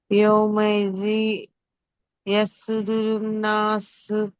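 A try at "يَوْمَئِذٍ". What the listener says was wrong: రెండు హరకాతుల గున్నా చేయలేదు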